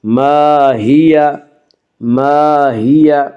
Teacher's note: الف مدہ کو ایک الف کے برابر کھینچ کر پڑھیں گے۔